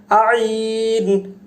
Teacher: আইন হলকের মাঝখান থেকে আসবে, ভিতর থেকে আসবে।